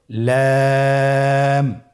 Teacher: লাম হরফটির মাখরাজ হলো জিহ্বার আগার কিনারা উপরের দাঁতের মাড়ির সঙ্গে লাগিয়ে উচ্চারিত হয়।